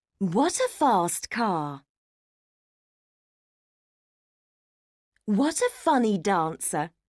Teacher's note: did you feel the falling intonation at the end of each sentence